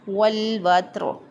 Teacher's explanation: واو زبر تا وت، یہاں پہ وت اس طرح اس پہ قلقلہ نہیں کرنا، اس کو پڑھیں گے والوتر۔ را ساکن، ما قبل بھی ساکن، اسے ما قبل حرف پر زبر ہے تو را کو پر پڑھیں گے